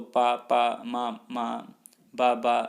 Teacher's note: बच्चा भी ओष्ठों को मिलाता है तो पा पा मा मा बा बा ऐसे उच्चरित करता है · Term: ओष्ठ्य ध्वनियाँ